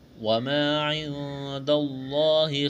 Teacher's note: نزلا من عند اللہ وما عند اللہ خیر للابرار، وما الف مدہ ہے، ایک الف کے برابر کھینچتا ہے، نون ساکن کے بعد دال ہے، اخفا کریں گے، یہاں پر آواز ناک میں چھپائیں گے، لفظ اللہ کے نام سے پہلے زبر ہے، لفظ اللہ کے نام کو موٹا کرنا ہے۔